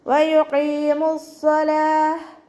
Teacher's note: വയുഖീമുസ്സലാഹ്, വാവ് ഉച്ചരിക്കുമ്പോൾ ചുണ്ടുകളൊന്ന് സർക്കിൾ ചെയ്ത് കൊടുക്കുക